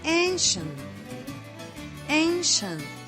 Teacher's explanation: when the s is followed by the j sound turns into the sh sound